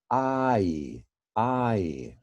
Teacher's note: that's actually a diphthong i i right we have an ah and we have an e